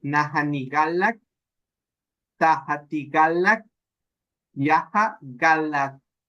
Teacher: esa K tiene que tronar cuando usted la pronuncie, porque resulta que usted dice, T, y usted la pronuncia como una T.